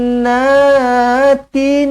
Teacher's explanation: Janna Nun sabdu wajibul gunah dengungkan dua harakat